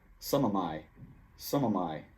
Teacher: Some, the M from some, links to of, and the of is reduced · the of is even reduced more because it's followed by a word that starts with a consonant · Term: linking